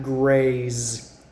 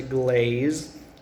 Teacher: Grey's sounds very similar to glaze but it has the R sound